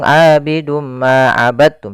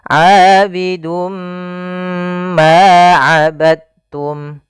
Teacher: kita masukkan tanwinnya kepada huruf mim, kemudian ditahan. Abidum ma, tahan ma, baru dilepas. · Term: idgham bi gunnah